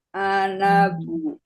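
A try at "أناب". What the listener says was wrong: Panjang Bu. Anabu. Sesuai tulisannya bacanya. Anabu. Panjang ini Bu tulisannya di sini.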